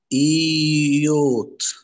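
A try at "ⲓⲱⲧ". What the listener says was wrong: اليوتا هنا وراها ايه؟ حرف متحرك. مش اي.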